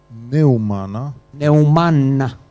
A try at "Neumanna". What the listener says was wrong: Neumanna. 2 de N.